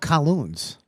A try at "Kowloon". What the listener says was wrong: It's first of all, it's Kowloon. It's no S. It's Kowloon.